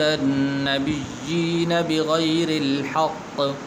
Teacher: یا کے نیچے کھڑی زیر ہے تو اس کو آپ نے لمبا کرنا ہے